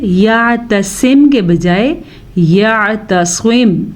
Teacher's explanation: کوشش کر کے آپ نے سواد کو موٹا پڑھنا ہے